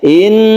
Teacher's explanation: Inna ini adalah tasdid Nun guna musyadadah dan ini adalah berdengung guna artinya dengung kita tahan